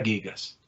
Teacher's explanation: alfa la tengo que volver larga. ¿Por qué? Pues por lo que he acabado de hacer, para compensar la caída de las dos consonantes del tema, la nu y la tau.